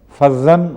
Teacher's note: زوئے کو جب ادا کیا جاتا ہے تو زبان تھوڑی سی دانتوں سے آگے نکلتی ہے، اور اس طرح زوئے کی آواز صحیح مخرج سے ادا ہوتی ہے.